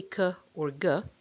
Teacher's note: we block the air or stop it completely behind the velum the tongue back is pressed against the velum and we release it suddenly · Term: velar plosive